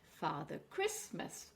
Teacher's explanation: four syllables, and we are stressing on the cri.